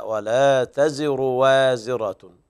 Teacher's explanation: من اهتدى فإنما يهتدي لنفسه ومن ضل فإنما يضل عليها ولا تزر وازرة وزر أخرى ولا تزر اسمعي ولا تزر وازرة وزر أخرى ولا تزر وازرة لا لا لا لا لا تضم الراء الراء مضمومة بدون مد يعني لا تشبع الضمة